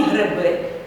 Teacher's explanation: у вимові ненаголошені голосні е и Наближаються один до одного наприклад у слові гриби ненаголошений и наближається у вимові до е